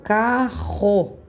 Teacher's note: Quando eu falo com 2 R's, o som ele sai lá do fundo da minha garganta, fica ra. Por exemplo, carro. · se vocês colocarem a mão na garganta, vocês vão sentir que treme lá atrás e não a ponta da língua